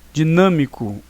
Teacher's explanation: uma proparoxítona, porque é a antepenúltima sílaba mais forte